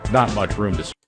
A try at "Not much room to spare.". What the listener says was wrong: room, to가 아니라 느라고 발음했죠. Not much room to spare.